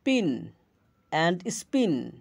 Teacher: আর স্পিন এখানে বাতাস বের হয় না। এই পি এর উচ্চারণে বাতাস বের হয় না আরেকটা বাতাস বের হয়। তবুও দুটোই পি ধ্বনিরূপ। এগুলো একে অপরের এলোফোন।